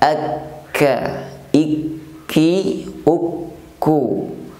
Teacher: Huruf kaf saat diucapkan juga terdapat hamas atau hembusan nafas.